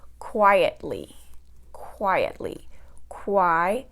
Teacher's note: That's 3 syllables, and it's going to have the stress on the first syllable because it's a 3-syllable word that ends with ly